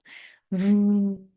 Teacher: Where your upper teeth touches the lower lip and you say V.